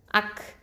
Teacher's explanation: இந்த காஃபுக்கு வந்து ஹம்ஸ் சிஃபத்தை கொடுக்கணும்.